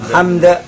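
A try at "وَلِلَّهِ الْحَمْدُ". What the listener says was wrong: Hamd bukan hamad, bukan. Hamad itu orang Jawa. Hamd. Bahasa yang benar seperti itu. Walillahil hamd.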